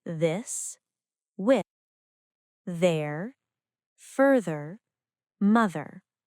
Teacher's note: The letter group TH can also be pronounced v, as in this, with, there, further, mother. This is a voiced dental sound. The tongue touches the teeth with vibration. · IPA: /ð/